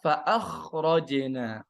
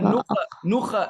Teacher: Jangan qalqalah harful kha.